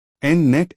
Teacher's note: N voiced nasal alveolar